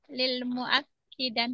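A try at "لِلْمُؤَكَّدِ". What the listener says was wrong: Di fathah. Lil mu'ak. Nah, lil mu'akkadi. Lil mu'akkadi.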